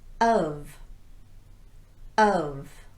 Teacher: here i'm using the uh sound as in cup no lip rounding